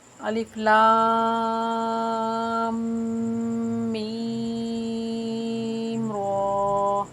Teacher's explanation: لام کو میم میں مدغم کریں گے، لام اور میم کو کھینچ کر مد کریں گے اور میم مشدد ہونے کی وجہ سے غنہ بھی کریں گے۔ ٹھیک ہے، میم کے اوپر جب شد آ جائے، تشدید آ جائے تو وہاں پر غنہ ہوتا ہے۔